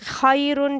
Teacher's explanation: اب ہم خیرن جب پڑھیں گے تو اس کو موٹا پڑھیں گے را کو، اور جب وقف کے دوران اس کے اوپر ساکن آ جائے را کے اوپر، اس سے پہلے والے حرف یا ساکنہ ہو یا پر ساکن ہو تو اس کو باریک پڑھیں گے۔